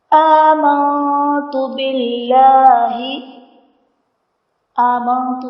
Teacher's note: آمنت میں نون ساکن کے بعد حرف اخفا تا ہے، یہاں پر اخفا کا غنہ کریں گے۔